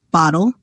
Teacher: The second syllable is just L without a vowel. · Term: syllabic L